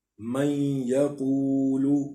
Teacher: اب نون ساکن کے بعد یا آ گیا ہے تو اس کو ہم پڑھیں گے، یہاں پہ نون کو ہم نے، نون کی جو آواز ہے اس کو ہم نے مدغم کرنا ہے یا کے ساتھ، تو اس میں نون کی آواز کو ہم ناک میں لے کر جائیں گے، یہاں پہ غنہ کریں گے